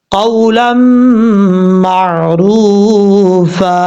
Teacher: جب وقف کریں گے تب یہ الف پڑھا جائے گا، اور ادغام کی وجہ سے 1 الف کی مقدار غنہ کر کے پڑھا جائے گا